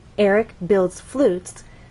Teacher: drop down on flutes, our final content word. And flutes has only one syllable, so we need to slide down. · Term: falling intonation